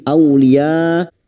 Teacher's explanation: Au fathah bertemu wawu sukun kita lunakkan huruf lin.